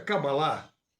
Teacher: A pronúncia Kabbalah, com a última sílaba tônica, vem da sua origem hebraica